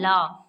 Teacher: दूसरे शब्दों में हम कह सकते हैं जिनके उच्चारण में जिह्वा का अगला भाग मसूड़े को छूता है और वायु पार्श्व मतलब बगल या आसपास से निकल जाती है, वे पार्श्विक कहलाते हैं।